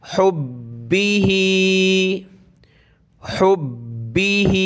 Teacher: बा को सख्त करेंगे, हा को नीचे की तरफ खींचेंगे।